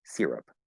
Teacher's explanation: Syrup with an or syrup with an I, R colored I, not an R colored E